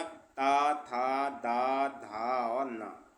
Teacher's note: जिसमें हम बोलते समय हमारी जीभ दांतों से लगे वो दंत होते हैं, और जिसमें ना लगे वो दंत नहीं होते।